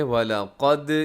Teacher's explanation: اس میں قاف موٹا ہے، لام باریک